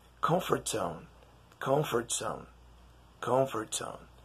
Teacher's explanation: when you say the T, comfort, the word zone sounds like zone with an S.